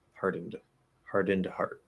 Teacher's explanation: if you're saying it clearly enough, which we might in this particular case, you're just going to push out a weak D.